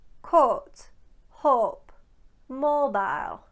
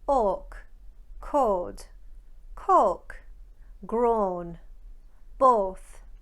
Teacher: they simply elongate the pure vowel O, O. That means that coat, hope, and mobile become coat, hope, mobile. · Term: shortening the O diphthong